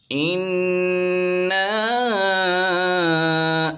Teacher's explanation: نون مشدد میں غنہ ہوتا ہے، غنّے کی مقدار ایک الف کے برابر ہے